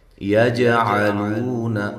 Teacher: اچھا، وقف کی صورت میں یہ حروف قلقلہ میں سے جو حرف ہے قاف، اس کا قلقلہ واضح کریں۔ یجعلون یہاں بھی جیم پہ قلقلہ ہے، اور لو واو مدہ ہے، نون کو لمبا نہیں کرنا۔